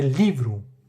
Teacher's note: Mas não é livrou, é livro. A ênfase está na primeira sílaba, está no li. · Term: sílaba tônica